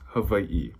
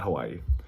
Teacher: the W in the Hawaiian alphabet, depending on the word, it's pronounced like a V. So that's why it's Hawaii, not Hawaii.